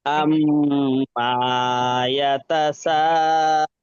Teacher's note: মিমটা টান দেবেন না